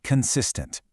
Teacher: The stress is on the middle syllable, consistent.